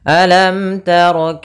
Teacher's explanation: karena di sini ada hukum tajwid berupa izhar syafawi yang mana mimnya harus dibaca dengan jelas tidak boleh ditahan